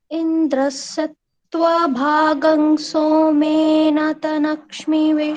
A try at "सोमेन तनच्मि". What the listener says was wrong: यहाँ पर भी सोमे ना तनच्मी ऐसे बोलना है। यहाँ पर न में जो आ है वो सुनाई नहीं पड़ रहा, तो उसको ठीक कर लें, बोले।